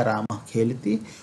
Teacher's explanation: तो जिह्वा मूल्य जो क और ख के पहले जो अर्ध विसर्ग होते हैं, विसर्ग तो नहीं कहेंगे हम, अर्ध विसर्ग, क्योंकि क और ख से मिलने के साथ इस विसर्ग का उच्चारण अर्ध विसर्ग के समान होता है, एक निश्वास के समान होता है, इसीलिए इन्हें अर्ध विसर्ग कहते हैं।